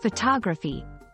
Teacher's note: when we move to photography the stress shifts and the first o in photography sounds different closer to thewwa sound here are some tips for mastering sound